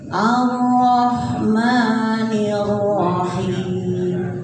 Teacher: Ha-nya kecil. Jadi jangan dibaca ha besar.